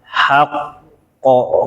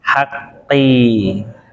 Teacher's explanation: Kalau antum berhenti, dia tebal. Hakko kayak gitu. Kalau wasol, dia infitah nyengir. Hakki. Langsung nyengir.